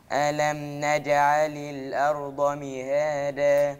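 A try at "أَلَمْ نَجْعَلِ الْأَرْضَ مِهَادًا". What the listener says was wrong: لو قلت الارض يبقى انا نطقت دال ما نطقت ضاد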